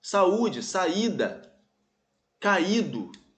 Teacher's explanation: esse U forma hiato com a vogal anterior. Ele é a sílaba mais forte. Está sozinho na sílaba, então leva acento.